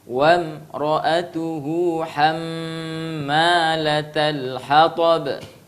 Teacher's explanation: hamma dengungkan mim yang bertasydid